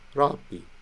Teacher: We pronounce not ra-bi, but rab-bi. Rab ends with our mouth coming to that plosive B position, right? You don't necessarily have to express a consonant for your mouth to have produced it, to have landed in it.